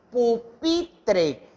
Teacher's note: yo hago mayor fuerza de voz en pi, entonces ahí es donde va el acento prosódico